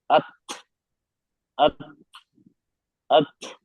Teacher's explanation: मैंने बारीक भी पढ़ा और इस पे हम्स भी किया।